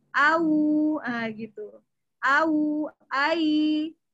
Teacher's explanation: Ya, bahasa Indonesianya diftong, luluh. Jadi yang tadinya W menjadi seperti U. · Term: alin